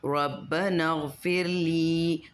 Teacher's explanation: رب یہاں پہ اس کی الف نہیں پڑھیں گے، غائن کے ساتھ ملا کے